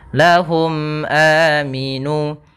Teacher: mim mati bertemu Hamzah maka dinamakan dengan izhar syafawi yaitu suara mimnya harus jelas dan tidak boleh ditahan · suara mimnya harus jelas dan tidak boleh ditahan. Tidak ada panjangnya dan tidak ada gunnahnya.